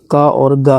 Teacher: का और गा जो है अल्पप्राण व्यंजन है।